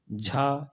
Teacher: यह सघोष है लेकिन महाप्राण है